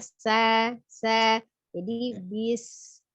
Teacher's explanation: Suara desis itu dengan tidak merubah makhraj ya, makhrajnya huruf sin itu ujung lidahnya ada di antara ya. Ujung lidahnya ada di antara ujung gigi seri atas dan bawah, jadi tidak menyentuh ya